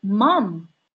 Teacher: si el personaje cerró la boca porque está utilizando una bilabial cierto que es la son las consonantes m p y b